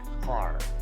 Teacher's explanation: general American English is rhotic, and speakers pronounce the R in words like par